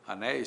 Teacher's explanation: ditongo ei, ditongo aberto, ditongo tônico, a palavra é oxítona, acento, né?